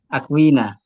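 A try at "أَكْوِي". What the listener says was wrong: Akui. Bukan akuina ya. Akui.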